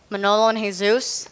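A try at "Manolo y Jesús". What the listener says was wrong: You don't pronounce the J.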